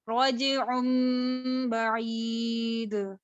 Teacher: रजिउम बईद, एक सेकंड के बराबर गुन्ना किया